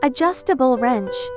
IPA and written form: əˈdʒʌstəbəl rɛntʃ (Adjustable Wrench)